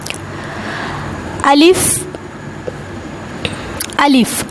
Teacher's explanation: الف منہ کے خالی حصہ سے ادا ہوتا ہے، نہ تو اس کو لمبا نہیں کرتے۔